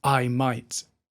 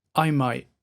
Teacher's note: he doesn't pronounce the T of Might he just stops with the I and he closes that ey Sound by just closing his mouth a little bit